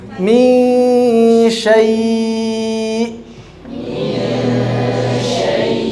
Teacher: Jadi nunnya harus masih ada kerasa, cuma samar.